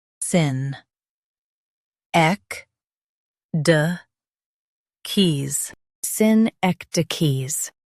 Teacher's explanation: Emphasize ek and keep d soft